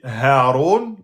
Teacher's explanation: le point de sortie est tout en bas de la gorge. Donc c'est plus simple Haron.